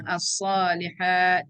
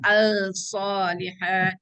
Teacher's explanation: Kita tak bunyikan lam tu. Kita masuk terus kepada sad. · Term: huruf syamsi